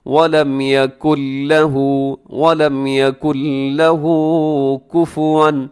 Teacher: اس میں نون کی آواز ختم ہو جائے گی کیونکہ یہاں ادغام بغیر غننے کے ہو رہا ہے، اسی یکن لہو پڑھنا درست نہیں ہے۔